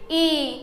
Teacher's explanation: ये दीर्घ ई जो है इसमें ह्रस्व स्वर से दो गुना समय लग रहा है अर्थात इसका उच्चारण करने में दो मात्रा काल का समय लग रहा है तो इसलिए इसे क्या कहते हैं?